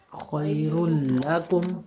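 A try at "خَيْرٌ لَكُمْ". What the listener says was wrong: شاباش، بالکل ٹھیک ہے.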